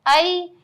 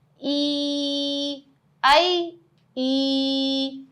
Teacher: ہم نے یا لین کو پڑھا جلدی سے ای, پھر جب یا مدہ بن رہا تھا تو ہم نے اس کو کھینچا